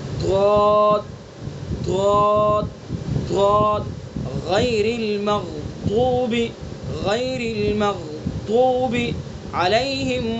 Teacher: اب دونوں طرف آ جائے، دونوں زبان کی دونوں کروٹوں کو اوپر لگائیں گے ڈاڑوں پر